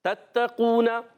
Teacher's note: تا کا مخرج زبان کا سرا اوپر کے دانتوں کی جڑوں سے تا ادا ہوتا ہے